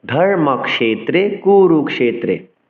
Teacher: এই কিয়কে ক্ষ উচ্চারণ করতে হবে, অর্থাৎ ক আর মূর্ধন্য সূচকে যেহেতু এই যুক্তাক্ষরটি হচ্ছে, ফলে ক এবং মূর্ধন্য ষকে স্বতন্ত্র উচ্চারণ করতে হবে, ক্ষ উচ্চারণ করতে হবে